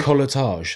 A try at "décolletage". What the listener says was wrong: It's not a colletage, it's a décolletage. Décolletage. Décolletage. I think it's got a little acute accent somewhere.